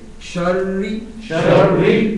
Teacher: اچھا یہاں ایک احتیاط ہے کہ را جب مشدد پڑھی جائے گی، را جب شد کے ساتھ پڑھی جائے گی تو اس میں احتیاط یہ ہے کہ اس میں تکرار نہ آئے، مثلا شری نہ بن جائے. را کو کنٹرول کر کے ادا کرنا ہے کہ مشدد بھی رہے اور اس میں تھرتھراہٹ تکرار کی جو ہے اس کی تھرتھراہٹ نہ آئے